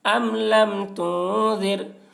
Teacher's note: ام لم تانون پیش تن، ام لم ذال غا زیر ذر، ام لم تنذر۔ نون ساکن کے بعد حروف اخفا میں سے ذال آ رہا ہے، اس لیے نون کی آواز کو ناک میں چھپا کر پڑھیں گے، اس کو اخفا کہتے ہیں۔